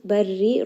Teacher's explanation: Dhulumatil barri, lam has tawassut. Barri, ra here in this case is going to be light because it has a kasra